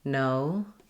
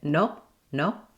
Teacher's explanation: Whereas in English, O, my tongue raises and my lips get less pursed. O, they close a little bit as my tongue raises in English. So it'll sound, if you use your native language O, it'll sound too short. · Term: full O diphthong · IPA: /oʊ/